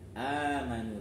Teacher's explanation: Sukunnya diganti mad amanu, dipanjangin, panjang 2 harokat. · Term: mad badal